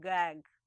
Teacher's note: contacts the region near the back of the roof of the mouth near the structure called the velum this is called whaler place of articulation it's a feature of